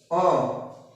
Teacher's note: इसमें ना तो जीव ज्यादा आगे की तरफ होती है ना पीछे की तरफ ये मध्य स्वर सेही बोला जाता है